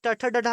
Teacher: और ये टठा डढ़ा हम लोग किससे बोलते हैं? मूर्धा से बोलते हैं।